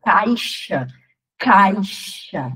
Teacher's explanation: a gente percebe quando a gente está falando que o A, ele tem uma tonicidade, ele é um pouco mais forte do que a letra I. Então, o I fica apoiado. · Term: ditongo